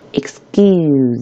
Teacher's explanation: 这个▁k▁就要浊化成它对应的▁g